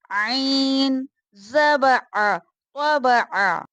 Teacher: حلق کے درمیان والے حصے سے ادا ہوگا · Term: حرف حلقی